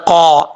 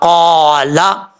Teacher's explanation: اس کا مخرج ہے زبان کی جڑ اوپر والے تالو کے نرم حصے سے لگے تو قاف پڑھا جاتا ہے